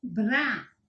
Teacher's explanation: Eles falam que o som é tremido. E ele aparece com todas as consoantes.